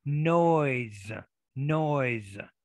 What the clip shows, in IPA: noyz